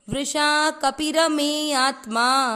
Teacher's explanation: कपि ऐसे पी को खींचना नहीं है, यहाँ पर जोर र पे दिया जाएगा ना कि कपि पर, क्योंकि पी की मात्रा छोटी है